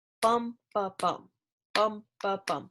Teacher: it sounds stressed, unstressed